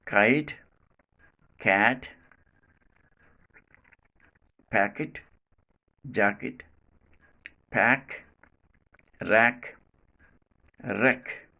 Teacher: Place of articulation, velum. Manner of articulation, plosive. Quality, voiceless. So this sound is called velar voiceless plosive.